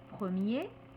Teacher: er un adjectif masculin qui se termine par er r mais le er est prononcé e c'est-à-dire qu'on n'entend pas le r